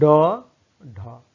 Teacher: जिसके उच्चारण में जिह्वा ऊपर उठकर मूर्धा को स्पर्श करके तुरंत नीचे आ जाए, उसे द्विगुण व्यंजन कहते हैं।